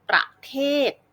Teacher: เราจะออกเสียงประนะคะเบาๆไม่เน้นน้ำหนักเสียงไม่ลงน้ำหนักเสียง